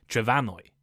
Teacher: And a few centuries ago, the M in Welsh somehow changed to an F, pronounced like a V, making the modern Welsh name Trefanwy